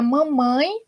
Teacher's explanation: Na palavra mamãe, perceba o que eu já expliquei para vocês, esse vai ter som de I, por isso eu tenho a vogal e eu tenho a semivogal, tá? Então, um som mais forte, um som mais fraco, ditongo nasal decrescente